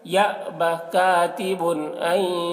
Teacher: تنوین کے بعد حمزہ ہے حروف حلقی میں سے تو تنوین میں اظہار ہوگا، تنوین کو ظاہر کر کے جلد پڑھیں گے